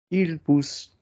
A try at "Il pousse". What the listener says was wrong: Good. Smaller P. Il pousse.